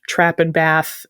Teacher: One of them is called the trap bath split because in the north trap and bath and words like that all have the same sort of like flat short a but in southern England some words like bath have that long a.